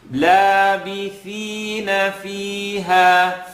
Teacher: Labith, tip of the tongue, edge of the top teeth